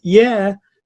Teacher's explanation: But the way pronounces the word yeah sounds a little bit what I call sarcastic, all right? It has a very high pitch rising tone and it sounds a little bit like sarcasm